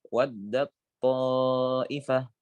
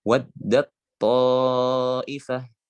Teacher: memasukkan huruf ta kepada huruf to, yang mana dua huruf ini seolah menjadi satu huruf yang bertasydid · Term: idgham